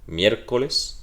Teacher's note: Miércoles es drújula, se marca y se va a marcar sobre la E, porque recuerden que esta es una I y la I suena como una deslizada, suena como una ya